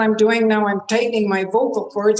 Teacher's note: vocal cords and you can hear what's happened to my voice the vocal cords get tight and the whole bottom end of my voice is gone